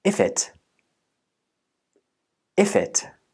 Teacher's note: if's last consonant is f, and the next vowel sound is I. These got linked together and became if it.